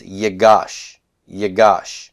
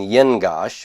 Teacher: the noon has assimilated into the gimel it would have been young gosh but now it's yeah gosh